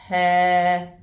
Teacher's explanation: the ha sound comes from the bottom of the throat which is nearest to the chest